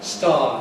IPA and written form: stɑː (star)